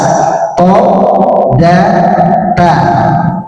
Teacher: th da dan ta itu ya ujung lidah bertemu dengan gusi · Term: ujung atas